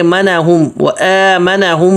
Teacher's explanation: آگے منہم وآمنہم، یہاں بھی غنہ ہوگا کیوں کہ میم ساکن کے بعد میم آ رہا ہے تو یہاں بھی غنہ ہوگا.